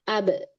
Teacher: Kolkolah, ab. Karena dia kolkolah ada pantulan.